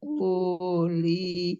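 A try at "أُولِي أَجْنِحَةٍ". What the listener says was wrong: Uli-nya tidak panjang, Bu. Uli-nya pendek.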